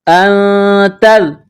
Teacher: حروف اخفا ہے تو یہاں غنہ کرنا ہے، آواز ناک میں چھپانی ہے